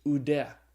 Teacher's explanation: is pronounced ooh like in the word soup